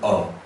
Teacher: It was kind of in the middle ground of an A and O, and then it was very airy.